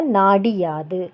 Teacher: குற்றியல் உகரத்தில் உள்ள உகரம் இகரமாக மாறும் அந்த இகரம் தனக்குரிய ஒரு மாத்திரை அளவிலிருந்து அரை மாத்திரை அளவாக குறைந்து ஒலிக்கும் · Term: குற்றியல் இகரம்